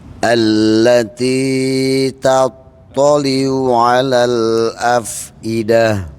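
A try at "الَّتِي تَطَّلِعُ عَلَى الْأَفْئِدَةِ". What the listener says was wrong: Yang T-nya kepanjangan dikit ya Pak, sekali lagi ya Pak. Allati ta ya Pak.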